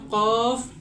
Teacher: জিহ্বার গোড়া তার বরাবর উপরের তালুর সঙ্গে লাগিয়ে কফ উচ্চারিত হয়